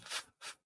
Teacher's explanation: this is bottom lip and upper teeth so we have F and v f is the voiceless version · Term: labio Dental